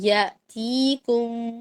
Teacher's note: تا یا زیر تی کو لمبا کریں گے